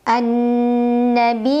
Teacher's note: Sukun maka cara membacanya karena ya-nya bertasydid kita baca dengan naber kita tekan pada makhraj huruf ya naikkan intonasinya kemudian panjang dua harakat